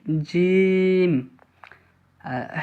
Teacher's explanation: জিভের মাঝখান এবং তার বরাবর উপরের তালুর সাথে লাগিয়ে উচ্চারিত হয় জিম